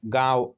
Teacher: कहलाते हैं जैसे कि इनके ऊपर चंद्रबिंदु लगाया जाता है और नाक की सहायता से बोला जाता है इसलिए अनुनासिक कहते हैं